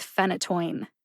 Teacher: phenytoin has three syllables the first syllable Fen gets the emphasis that means that you say Fen with a